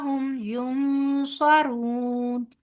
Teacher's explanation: نون ساکن کے بعد صاد ہے لہٰذا یہاں پر اخفا ہوگا